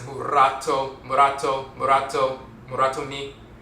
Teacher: they have a letter L, the Akan person will replace that with the rolling R